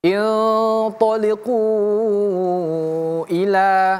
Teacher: Kalau dia kata yang berbeda namanya mad jaiz munfasil. Lima harakat saja.